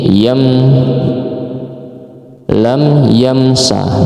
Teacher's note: Nah, terus lam mim mati bertemu dengan ya. Ini izhar syafawi. Jadi bacanya harus jelas.